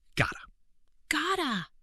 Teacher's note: This is got to, compressed into one syllable.